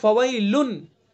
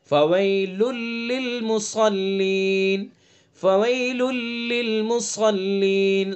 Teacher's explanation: جب ہم نے ادغام کیا تو یہ نون کی جو آواز ہے یہ ختم ہو گئی، سائلنٹ ہو گئی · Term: ادغام تام